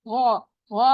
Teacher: غا، غا آپ کو پتا ہے بہت موٹا اونچا ہے، اور ساتھ ہی مد بھی ہو رہی ہے. الف مدہ ہو رہا ہے, الف ہے اس سے پہلے زبر ہے, 2 کاؤنٹ اسٹریچ کریں گے.